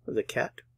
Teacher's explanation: I'm not pronouncing the T at the end